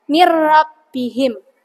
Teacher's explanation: Nunnya itu tidak dibaca, tapi dia langsung masuk ke huruf ro-nya tanpa dengung, alias jelas ro-nya ya.